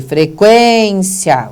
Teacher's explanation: O quen é o fortão, então o cia você pronuncia de uma vez só.